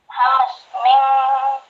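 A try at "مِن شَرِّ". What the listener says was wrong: Sin gede. Jangan ke hamas. Ikhfa. Jadi hukumnya hukum dari nun mati. Hukum nun mati kan ikhfa, idgham, iqlab, idhar.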